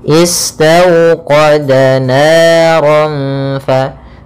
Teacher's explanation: Bacaan lin yaitu suaranya adalah lembut pada lafal waw sukunnya. Istawqada, istaw dengan dimonyongkan bibirnya.